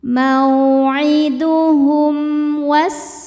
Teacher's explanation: Hum ada hukum izhar syafawi karena mim sukun tidak menghadapi mim ataupun ba. Maka cara bacanya mim sukun dibaca izhar atau jelas.